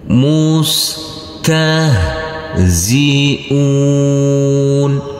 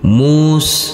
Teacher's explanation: huruf Sin tidak boleh dipantulkan karena ini bukan bacaan Qalqalah